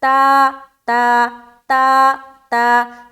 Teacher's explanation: تا الف زبر تا، منہ کو بالکل کھول دیں گے کیونکہ تا باریک حرف ہے اور الف کے ساتھ لگ کر آ رہا ہے، بالکل آواز باریک رہے گی آخر تک۔